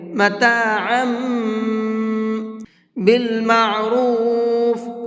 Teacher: تو اب یہ میم پڑھا جائے گا، اس تنوین کی آواز نہیں نکلے گی، اور غنہ بھی کریں گے۔ متاعا بالمعروف، را کو پر کر کے پڑھیں گے۔